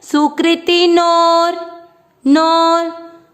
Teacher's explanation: आप इसको right side में देखेंगे, ऊपर जो मात्रा है वो आधा र और फिर जू। तो इस नो को जब आप ऊपर लंबा खींचते हैं अवग्रह के कारण, तो इसको लंबा खींचते हुए ही हमको आधा र बोलना है